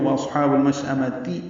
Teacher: مشأمہ میں اب میم کو شین سے ملانا ہے، تو شین ساکن پہ ہمس ہوگا، تفشی ہوگی، حمزہ یا کی شکل میں ہے، جلدی ادا کریں گے۔